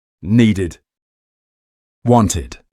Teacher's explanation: The first sound is pronounced id. This happens when a word ends in a t or a d. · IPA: ɪd